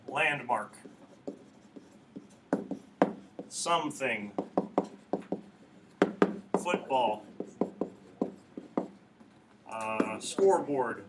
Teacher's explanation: Spondaic is stressed followed by stressed.